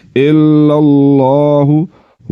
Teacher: لفظ اللہ کے نام سے پہلے زبر ا گئی لفظ اللہ کے نام کو پر پڑھیں گے